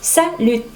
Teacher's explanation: fíjate que la T aquí es muda al final